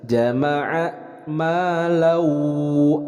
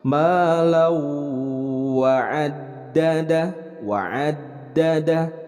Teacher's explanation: tanwin bertemu dengan huruf waw. Jadi diidghamkan kemudian disertai dengan gunnah, ditahan 2 harokat. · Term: idgham bi gunnah